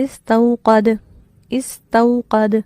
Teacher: یہاں پر ایک چیز سے آپ کو سمجھاتی ہوں کہ جب ہم کسی حرف پر وقف کریں گے، اب بظاہر مثال کے طور پر آپ یہ لفظ دیکھیے، استوقد دال پہ زبر ہے، ان کیس یہاں مجھے وقف کرنا ہے، مثلہم کمثل الذی استوقد نارا، اب میں نارا کی بجائے استوقد پہ وقف کرنا چاہ رہی ہوں تو دال ساکن ہوگا، اس صورت میں یہاں پر قلقلہ کیا جائے گا